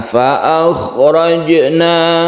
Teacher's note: Sugra artinya kecil, maksudnya cara mantulkan atau mengkolkolakan jim ini biasa saja, tidak perlu ditekan, terlalu ditekan. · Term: qalqalah sugra